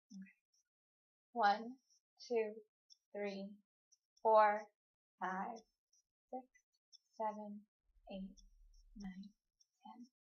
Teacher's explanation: That sounds very relaxed and breathy at the end, which is perfect. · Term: confidential voice